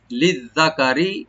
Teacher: রাটাকে আমরা পাতলা করে পড়বো লাইট করে